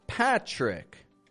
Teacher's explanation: we make a CH sound followed by a stressed R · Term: T and R combination